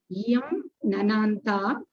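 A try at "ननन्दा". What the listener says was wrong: Nananda, not Nananta. Nananda.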